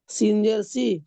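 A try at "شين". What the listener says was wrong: নয়, শিন শি। সিন নয়, শিন। সামনে উপর তালু শিন উচ্চারিত হয়। শি।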